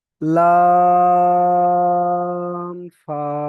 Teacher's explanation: লাম তিন আলিফ টান হবে, ফা এক আলিফ টান।